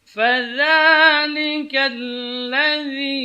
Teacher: ujung lidah ketika mengucapkan huruf za ini di ujung gigi seri atas, zi keluar sedikit.